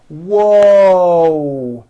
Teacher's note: there's a w sound at the beginning of that but there's also a hidden w sound at the end